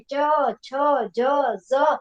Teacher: હવે આનો ઉચ્ચાર કરીએ ત્યારે આપણો જીભનો આગળનો ભાગ છે એ દાંત વચ્ચેના ભાગ થઈ અને તાળવામાં ઉપર જાય છે, ત્યાંથી ઉપર જાય છે, એટલે આને તાળવ્ય વ્યંજન કહેવાય.